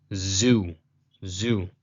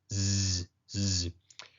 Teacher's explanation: the ZAYIN is a sibilant making a /z/ sound as in 'zoo'. Or think of the sound a bee makes, /z/. So, you can use the English letter "Z" to transliterate ZAYIN.